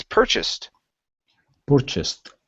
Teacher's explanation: the stress is at the very beginning okay instead of purchased it's purchased purchased lafaette purchased other needed